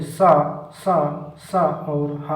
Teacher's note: सा और हा ये व्यंजन ऊष्म कहलाते हैं। इनका उच्चारण घर्षण से उत्पन्न ऊष्म वायु से होता है।